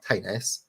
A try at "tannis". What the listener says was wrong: tenis the way you're saying tenis and not tannis it's just like throwing me a little bit